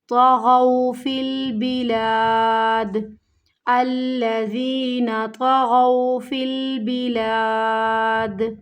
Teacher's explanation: طغوا کی ادائیگی صحیح سے ادا کرنی، ہونٹوں کو گول نہیں کر دینا، نہیں تو پھر تو کی آواز آئے گی